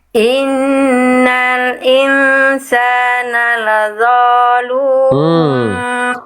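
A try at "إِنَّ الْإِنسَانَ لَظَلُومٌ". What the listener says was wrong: Vo-nya kepanjangan Bunda. Oke, kita fokus ke panjang pendek dulu. Vo-nya kepanjangan. Lavolu nggak gitu. Itu vo-nya kepanjangan. Lavolu itu dua ketuk tuh. Lavo tuh. Lihat ketukan pena saya. Lavolu tuh. Vo kepanjangan langsung. Lavolu langsung. Lavolu yang panjang lu-nya. Nanti Bunda tinggal latih vo-nya tebalkan ya, angkat pangkal lidahnya ya.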